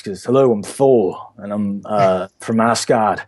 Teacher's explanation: I started realizing that it's very breathy when he talks